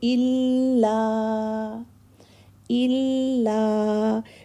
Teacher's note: الا میں بھی لام پر تشدید ہے نا, تو دیکھیں الا تھوڑا سا ہولڈ کرتے ہیں. الا الا الا نہیں پڑھیں گے بلکہ الا الا.